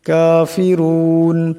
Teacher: এখানে রার উপর পেশ আছে, তাই রাকে মোটা করিয়া পড়বেন